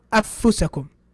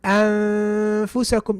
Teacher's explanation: I can hear the ghunna, which belongs to the noon. So the ghunna kind of like gives it away that the noon is hiding there.